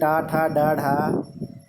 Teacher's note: हमारी जीभ जो है वो बीच में मूर्धा से जाकर सटती है। तो हम कह सकते हैं कि इसका उच्चारण मूर्धा से होता है। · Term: मूर्धन्य वर्ण